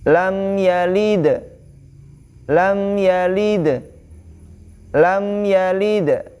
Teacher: ketika di ujung ya disitu huruf d-nya di ujung maka disitu dihukumi qolqolah kubro atau Qalqalah besar